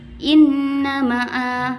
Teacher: hukum bacaannya guna musyaddah karena ada nun tasdid dan cara membacanya dengan mendengung